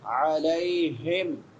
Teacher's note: علی لام کے بعد یائے لین ہے، یا ساکن ما قبل فتحہ ہے